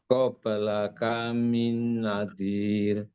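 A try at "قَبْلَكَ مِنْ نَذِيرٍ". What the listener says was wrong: Minnya panjang, jangan lupa. Qablaka min nadir.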